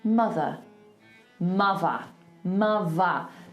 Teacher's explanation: I'm actually turning it into a V, okay? Because it's a voiced TH. If I was in RP and I was saying mother, I have to do a th.